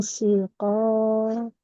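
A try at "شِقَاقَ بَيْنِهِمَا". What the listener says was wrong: Shiqoqo. Shi. Nah, tidak si, tapi shi. Shi. Wa in khiftum shiqoqo bainihima.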